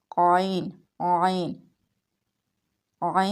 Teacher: عین، حلق کا درمیانی حصہ استعمال میں آئے گا اور اس کی ادائیگی میں حمزہ کی آواز نہیں آنی چاہیے